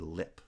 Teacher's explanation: that I sound is a sonority peak because the segment before has lower sonority and the segment after also has lower sonority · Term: high front vowel